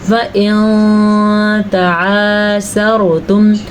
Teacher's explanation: نون ساکن کے بعد تا حروف اخفاء میں سے آیا تو نون ساکن کی آواز کو ادا کرنے کا طریقہ سیکھیں. غنہ بھی کرنا ہے اور اخفاء بھی کرنا ہے.